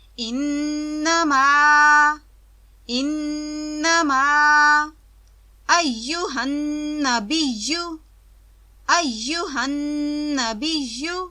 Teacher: نون مشدد، اس پر بھی آواز کو لمبا کرتے ہیں